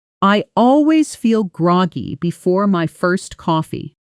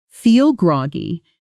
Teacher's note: Notice how feel groggy almost blends together. Feel groggy, the two words leaning into each other. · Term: connected speech